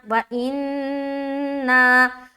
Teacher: बहरहाल यहाँ पर हमने किया, किस तरह हिज्जे करेंगे, वाव ज़बर वा, हमज़ा नून ज़ेर इन, नून अलिफ मद ज़बर ना, व इन्ना, تو ان میں نون مشدد کا غنہ کیا اور نا میں مد کریں گے